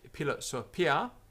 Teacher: in classical Latin it's an aspirated p